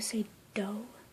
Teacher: when you say do you bring your tongue back a little bit